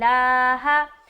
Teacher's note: लफ्ज़ अल्लाह कलाम को बारीक रख रहे।